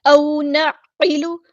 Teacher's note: عین کو وسطی حلق یعنی مڈل تھروٹ سے ادا کرنا ہے